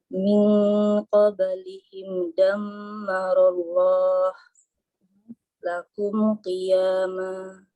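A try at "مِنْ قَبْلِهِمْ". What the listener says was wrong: Nah, Ahsanti, fathallah alaiki.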